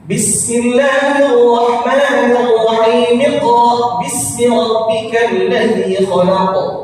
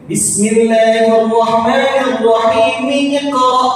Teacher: Jadi sambungnya dengan huruf mim yang ada pada kalimat basmalah. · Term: dibaca sambung